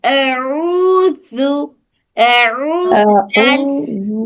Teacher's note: او میں مد ہو رہا، تھوڑا سا کھینچ کے پڑھیں گے